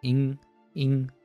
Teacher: So you should notice some air passing through your nose. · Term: nasal sound